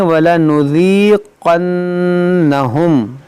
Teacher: یہاں پر قاف موٹا کریں گے, نون میں غنہ کریں گے